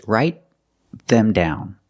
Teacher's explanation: The T in write is a stop T because it's before a consonant.